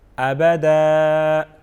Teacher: لیکن ابھی صرف یہ پڑھتے ہیں کہ جب ہم وقف کریں گے دو زبر والی تنوین میں، دو زبر والی تنوین میں جب ہم وقف کریں گے تو آخری حرف کو ہم کس طرح پڑھیں گے، یعنی آخری حرف کو ہم ایک الف کے برابر کھینچ کے پڑھیں گے